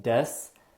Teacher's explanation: you don't pronounce the u sound in desu in japanese it's pretty common to drop the u and the e vowel sound